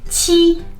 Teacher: in pinyin “q” is pronounced like the English ch sound but with the tongue positioned closer to the teeth and the lips more spread